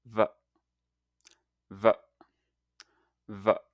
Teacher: place your top teeth lightly on your lower lip. And now make a buzzing sound with your vocal cords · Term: V sound